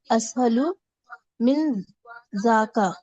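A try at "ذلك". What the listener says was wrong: اسہل من ذاکا. ذاکا ذالکا ہی ہوتا ہے, یہ عام زبان کا ہے, ذالکا ہی ہوتا ہے وہ. من ذالکا.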